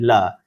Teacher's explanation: इसमें जीभ के नोक के दोनों तरफ यानी पार्श्वों से हवा निकालने के कारण इन ध्वनियों को पार्श्विक ध्वनियां जो है वो कहा जाता है